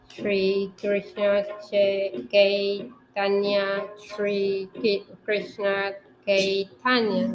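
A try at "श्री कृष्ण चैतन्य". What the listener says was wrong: Chaitanya. Actually, here. Put an H.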